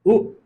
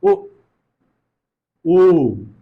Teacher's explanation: मुख की आकृति गोल हो जाती है, जो ओष्ठ है वो ओष्ठ गोल हो जाती है। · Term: वर्तुल स्वर